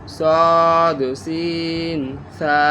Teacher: সদ মোটা, সিন চিকন, সা নরম উচ্চারণ